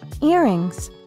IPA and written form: ˈɪrɪŋz (Earrings)